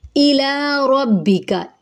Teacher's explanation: حمزہ ہے سختی سے، لا الف مدہ ہے، ایک الف کے برابر لمبا